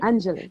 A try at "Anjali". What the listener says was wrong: You don't stretch the syllable.